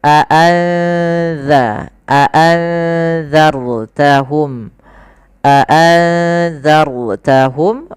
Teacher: nun mati ketemu dalal yaitu ikhfa samarkan nunnya kepada huruf dalalnya